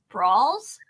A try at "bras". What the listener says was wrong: You've added an extra syllable. No. It sounds like It sounds like a fight. Brawls.